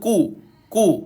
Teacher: huruf Kaf dia dibaca dengan lidah tidak terangkat